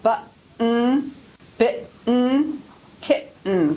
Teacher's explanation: we actually are using a glottal stop before the final N sound. Button, you don't really hear a T, that's actually a glottal stop.